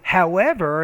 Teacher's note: your tone kind of rises, you put emphasis on that contrast word